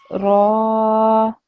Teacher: So that means that instead of saying ra, I would say ra, because the ra with the fatha is followed by an alif. Therefore, I make this long for 2 seconds.